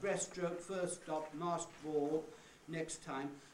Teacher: i left the t out at the end of next of the first word the word next in next time i just had the k and the s